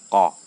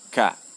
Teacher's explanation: pangkal lidah paling belakang bersentuh dengan langit-langit yang lunak, menghasilkan qa, huruf qaf, qa ya. Sedangkan naik sedikit menyentuh langit-langit yang keras, ka, keluar darinya huruf kaf.